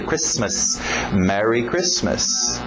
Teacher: O T é mudo, não pronuncia esse T.